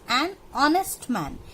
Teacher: Like if you see these two examples, an honest man, we don't say honest. So pronunciation of H is silent here. We don't pronounce it.